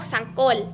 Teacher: Huruf L yaitu adalah kontoid latelar, apiko-alveolar dan bersuara